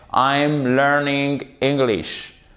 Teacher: Sur les affirmations, vous avez une intonation qui fait comme ça, qui descend sur la fin. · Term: intonation descendante